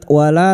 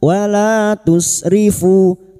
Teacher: lam alif dua harakat kita panjangkan wala tusrifu tusrifu duma diikuti wau sukun dua harakat dan kita wakaf pada tanda wakaf jaiz jim kecil namanya wakaf jaiz artinya boleh terus boleh berhenti.